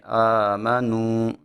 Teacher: واو مدہ کو ہم ایک الف کے برابر کھینچ کے پڑھتے ہیں۔ جب ہم نے اس کو ادا کرنا ہے تو ہماری آواز ناک میں نہیں جانی چاہیے